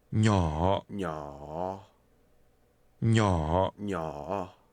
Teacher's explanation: Little is pronounced with a falling, rising tone.